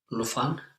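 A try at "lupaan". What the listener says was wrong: It's not an F. It's not F there. Luvan, it would be Luvan, but what happens to the V? Lupan, what happened to the V? Tavata, tapan, luvata, lupan.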